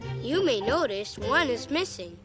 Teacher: He stresses the word you, notice, one, and missing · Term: rhythm